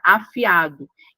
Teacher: Então, a separação silábica é feita dessa forma. Percebam que tem a individualidade fonética entre a vogal i a vogal a, representando aqui o iato.